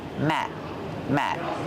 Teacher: the word Matt is a stop T we don't say Matt we stop the air we don't release the sound · the letter T at the end of the word Matt is a stop T we don't say Matt we stop the air we don't release